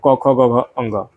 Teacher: इनका उच्चारण जो है वो कंठ यानी कि गले से होता है